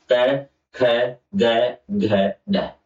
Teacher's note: आपके कंठ से आवाज आ रही होगी, तो इसको बोलते हैं कंठ वर्ग